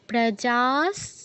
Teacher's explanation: যাতে দীর্ঘ করে তারপর বিসর্গ, পরে দন্তস থাকায় বিসর্গের জায়গায় দন্তস হসন্ত